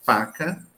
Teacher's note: esse sons saem fricção ele sai arranhado